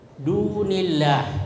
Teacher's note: Kemudian yang ketujuh, ya, dunillah, ya, dunillah itu ada lafzul jalalah, huruf sebelumnya berbaris kasrah, maka itu disebut lamul murakkakah, ya, artinya lam dibaca tipis. Jadi dunillah, bukan dunillah, tapi dunillah.